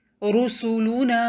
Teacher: را پر ضمہ یعنی پیش ہے تو را کو ہیوی پڑھیں گے، نون کے بعد الف مد ہے تو نون کو 2 کاؤنٹ لمبا پڑھیں گے، رسولنا۔